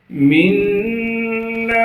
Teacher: میم کو نون سے ملائیں گے اس لیے کہ نون پر تشدید ہے